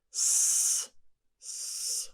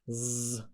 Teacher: s, s, unvoiced because no vibration again. Z, voiced because of a vibration